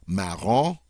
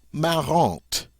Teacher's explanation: In masculine singular, I won't hear that T. In feminine, I will. Marrant, marrante.